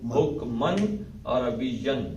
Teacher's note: عین ہلکی ہے تو یہاں پہ اظہار ہوگا